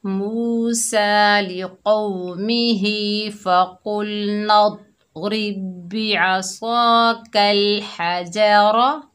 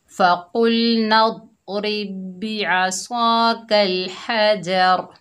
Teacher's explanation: वक़्फ़ की हालत में रा का ज़बर ख़त्म हो गया, रा साकिना हो गई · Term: वक़्फ़ बिल अस्कान